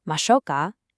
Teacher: instead of a flat mashoka, it should sound more like a gentle question · To make your offer sound genuinely polite and kind, you need to end the phrase with a rising intonation. So instead of a flat mashouka, it should sound more like a gentle question.